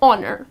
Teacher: the H here, which is at the beginning of the word, goes silent, and the correct pronunciation is honor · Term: H goes silent